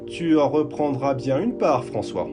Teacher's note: the letter R, which is a guttural sound made deep in the throat